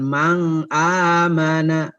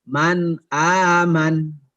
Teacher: Man jelas, nggak disamarkan dan nggak dimasukkan ke A, ya, nggak bisa, ya, karena ini huruf izhar, ya, jelas.